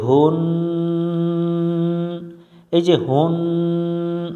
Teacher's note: শব্দটা বলবো হু হু মিলবে নুনের সাথে হুন এই যে হুন নাকের মধ্যে গুনগুন আওয়াজ করলাম এটাকেই গুন্না বলা হয় আর এই গুন্নাটা করাই জরুরি বা আবশ্যক হু মিলবে নুনের সাথে